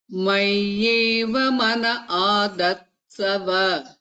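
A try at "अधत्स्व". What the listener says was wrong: That's adhatsva. It is not adhatsava. It is adhatsva. Yes.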